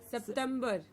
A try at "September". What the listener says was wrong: It is not September, it is September. And we need to remember the T in the middle to give us a frictional T sound to give us September.